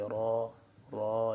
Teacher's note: را زبر را، تفخیم موٹا یعنی کہ پر پڑھیں گے